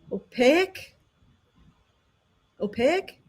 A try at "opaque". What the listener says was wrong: You're adding a syllable. It's just opaque.